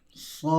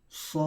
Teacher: Hujungnya ada huruf dal. Hendaklah dibaca dengan qalqalah.